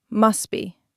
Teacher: The T is gone entirely.